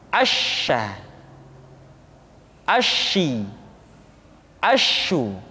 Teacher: apa yang disebut dengan sifat at-tafashi, yaitu menyebarnya angin di dalam mulut kita.